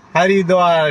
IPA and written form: hʌrɪˈdwɑːr (Haridwar)